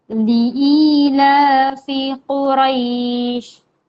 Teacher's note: یا ساکین سے پہلے زیر حرف آتا ہے، زیر والا حرف ہوتا ہے، تو وہ ہوتا ہے یا مدہ، یعنی اسے ایک الف کے برابر کھینچ کر پڑھنا ہوتا ہے · حرکت کو جلدی پڑھنا ہے، یا مدہ کو کھینچنا ہے، اور کھڑا زبر کو بھی کھینچنا ہے